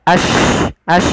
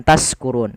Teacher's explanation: Yaitu suara shinnya dia ash bukan taskurun. Jangan diganti dengan sin. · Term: tafasyi